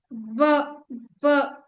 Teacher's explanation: व जो होती है, ओष्ठ और दंत से आती है। व, व आपको दांत और ओष्ठ का टच करना पड़ता है, ये इंपॉर्टेंट नहीं है।